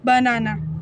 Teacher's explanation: In the word banana, the first and the last syllable are unstressed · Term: Unstressed syllable